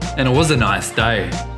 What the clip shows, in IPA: æ nɪt wə zə